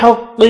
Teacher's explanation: وقف کرنے کی صورت میں قاف ساکن ہوگا، قلقلہ کریں گے، ملانے کی صورت میں ادغام مع الغنہ ہوگا۔